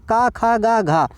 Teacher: कंठ से बोला जाएगा